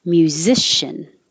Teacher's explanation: MYU means you start your tongue very high in a Y position. Musician. Zish.